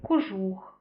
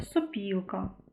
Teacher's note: це наприклад такі слова як кожух е сопілка в таких словах ми можемо на слух сприйняти не зовсім звук О А все-таки ближче до звуку у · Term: ненаголошений о